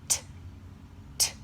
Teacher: This is an example of an unvoiced consonant because there is no voice involved.